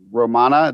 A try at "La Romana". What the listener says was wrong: La Romana. Put the L before it there.